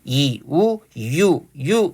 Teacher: 반모음 이에다 우 결합한 겁니다